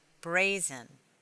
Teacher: The word brazen has two syllables, bray and zen. The first syllable is accented. Because the syllable ends in one vowel, it is an open syllable.